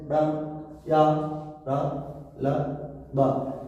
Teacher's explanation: इसमें प्राण वायु कम लगती है तो इसे अल्प प्राण कहा जाता है